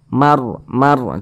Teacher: rnya juga dibaca tebal begitu Mar Mar tebalkan seperti itu sehingga pangkal lisan kita naik terangkat ke atas ketika Kita mengucapkannya · dibaca tebal cuman di sini yang kita temui huruf ra sukun sebelumnya tanda baca fathah juga Huruf rnya juga dibaca tebal begitu Mar Mar tebalkan seperti itu sehingga pangkal lisan kita naik